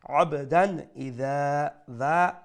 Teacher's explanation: the letter hamza and hamza is from the throat letters so we pronounce this tanween with izhar with clarity without any nasal sound